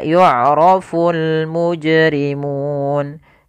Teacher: bacaan Qalqalah yang di mana huruf jimnya harus dipantulkan